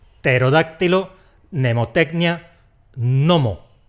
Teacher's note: La primera consonante nos la merendamos. No intentes decirla, que vas a quedar fatal.